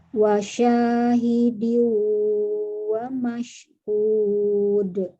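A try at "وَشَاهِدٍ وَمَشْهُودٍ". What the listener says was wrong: Hud. Huruf H-nya, H yang dari tenggorokan bagian bawah dijelaskan lagi.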